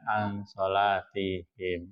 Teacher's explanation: dibacanya samar dengan dengung ya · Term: ikhfa